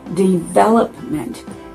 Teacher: The emphasis on the second syllable, development.